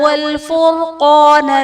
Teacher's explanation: فرقان میں را ساکن سے پہلے حرف پر پیش ہے، را کو پر پڑھا جائے گا، قاف حرف مصطالیہ ہے، پر پڑھا جائے گا